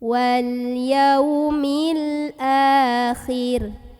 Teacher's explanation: maka cara membacanya dipanjangkan dua harokat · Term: mad badal